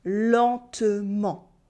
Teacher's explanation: No n sound and no t sound either.